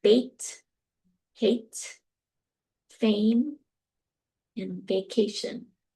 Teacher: the tongue body is in that mid-front position. The jaw is in a mid position. So, a lips are retracted. · it's unrounded. You can see my lips are retracted. · So A is a mid-front vowel, and it's tense. So you felt the tenseness with E, but A, you can see also that it's unrounded.